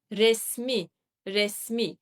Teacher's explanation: that I in the final syllable will drop and it will become resmi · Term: vowel loss